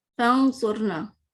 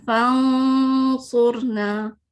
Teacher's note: میری tip of the ٹنگ سواد پہ ہے، آلموسٹ ٹچ کرے، ٹچ نہیں بھی کر رہی، یا کرے بھی کہ بہت ہلکی پھلکی. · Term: نون کو چھپا